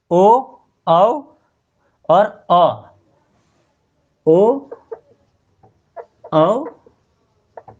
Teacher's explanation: फिर ओष्ठ और कंठ, जिसको कंठोष्ठ्य कहते हैं, यानी कंठ और ओष्ठ दोनों का उपयोग होता है